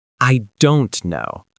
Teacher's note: The stress is on don't. The other words stay light.